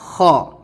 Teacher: حلق سے ہی نکلے گی، لیکن حلق کے اوپر والے حصے سے، جہاں سے حلق ہماری شروع ہوتی ہے وہاں سے، اور آواز تالو میں ٹکراتی ہوئی باہر آئے گی